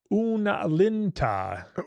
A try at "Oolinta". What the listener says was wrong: Yeah, there's no n.